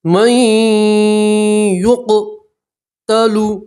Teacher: نون ساکین کو نہیں پڑھیں گے، میم کو سیدھا یا سے ملائیں گے اور گننا کریں گے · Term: ادغام